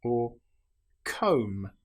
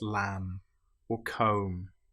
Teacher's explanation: Here we don't pronounce the B, we don't say lamb, it's just lamb or comb. The B is totally silent.